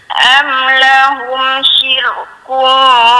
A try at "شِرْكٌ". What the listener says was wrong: Tu dia tebal balik tu. Syir, matikan sikit. Matikan nipiskan dengan okey.